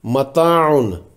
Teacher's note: الف سے پہلے تا ہے جو کہ باریک حرف ہے، حرف مستعلیہ نہیں ہے، اس لیے اس الف کو بھی باریک پڑھیں گے